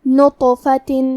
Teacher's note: یہاں حرف الطو ہے، طو حروف التفخیم میں سے ہے تو ہم یہ حرف کو بھاری آواز میں پڑھیں گے اور کیونکہ اس پہ جزم ہے اور حرف الطو بھی حروف القلقلہ میں سے ہے تو ہم یہ حرف کو ہلاتے ہوئے یہ کلمہ کو پڑھیں گے